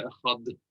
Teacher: You can't make the D carry on any longer.